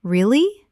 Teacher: when you ask a question like, Really? your voice goes up slightly at the end.